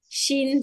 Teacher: জিহ্বাটা হ্যাঁ, উপরের সাথে লাগায় ফেলবেন, তালুর সাথে। শিন শিন, জবস্টা, শিন জবর সা, হ্যাঁ।